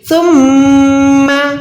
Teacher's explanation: سا کے بعد میم پہ شد ہے، یعنی میم پہ ہم نے گننا کرنا ہے